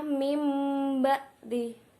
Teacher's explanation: Biasanya di Al-Qur'an ditandai dengan huruf mim kecil di atas huruf ba. La iqlab, nun sukun lebur ke dalam huruf ba tapi dibaca dengan mim